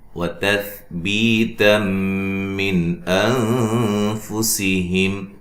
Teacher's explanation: سا کو نرم ادا کرنا ہے، تا کو باریک پڑھنا ہے